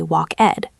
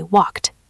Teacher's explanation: So in the past, we don't say walk-ed, we say walked. It sounds like a T, walked.